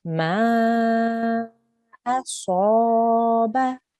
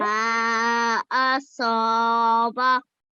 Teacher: And so the one thing you just need to focus on here is the sod. Remember, sod is a thick sound, so you need to make your mouth into a round shape